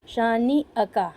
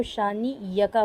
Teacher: پتہ نہیں کیسے حمزہ کی جو ساؤنڈ ہے وہ سافٹ ہو کر یا ساؤنڈ میں کنورٹ ہو جاتی ہے، اور اکثر لوگوں کے ہوتی ہے، بہت سارے لوگ اس کو شانی یکا پڑھتے ہیں۔